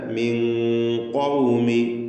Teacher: ഖാഫിന് സാക്കിനത്താ നൂനിനെ മറച്ചു മണിക്കണം. സാക്കിനത്താ നൂനിനെ മറച്ചു മണിച്ച് അവ്യക്തമാക്കി മണിക്കുക എന്നർത്ഥം. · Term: ഇഖ്ഫാ ഹഖീഖി